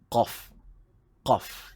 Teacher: Huruf qaf makhrajnya ialah di bahagian anak tekak.